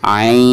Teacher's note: Jadi dibacanya itu harus mengandung ikhfa, harus ada bacaan ikhfa ya. Jadi setelah kita memanjangkan ain di ujungnya itu harus ada ikhfa atau harus disamarkan disertai dengan gunah ya